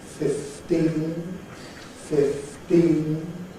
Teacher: this is an unaspirated T and this again is very very common in English pronunciation